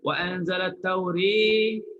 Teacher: Jangan turun kuat sangat. Wa anzalat tauri, itu dah condong kuat sangat. Tauri itu dah jadi imalah kubra. Angkat sikit.